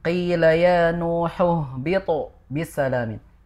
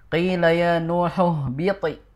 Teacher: Jadi misalkan di ayat ke-48 ada qila ya Nuhu bitu, ya tadi terbacanya itu seperti biti begitu, seperti miring, sehingga qalqalah huruf to-nya tidak begitu sempurna. Harusnya tebal qalqalahnya, naik.